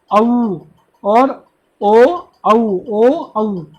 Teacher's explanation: उसके बाद होता है कंठ ओष्ठ, यानी कंठ से उच्चारण हो रहा है, साथ में ओष्ठ होठों का भी प्रयोग हो रहा है